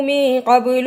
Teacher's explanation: قاف کو موٹا پڑھا، با پہ قلقلہ کیا